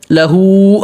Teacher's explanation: لہو ہاں پہ الٹا پیش ہے، تھوڑا کھینچنا ہے، ایک الف کے برابر